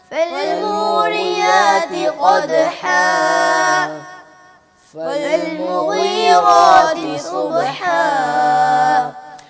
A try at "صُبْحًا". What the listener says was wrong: بیٹا یہ آخر میں جو ہے نا الف، اس کو نہ کھینچیں. قدح صبح یہ شارٹ ہوتا ہے.